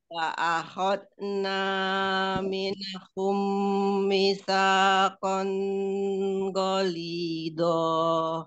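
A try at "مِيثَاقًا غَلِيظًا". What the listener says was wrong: Mitsaqan jangan ditahan langsung. Mitsaqan ghalidha. Ghalidha.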